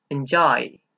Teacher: el sonido final no es de Y, es de I. Así que enjoy iría en la D.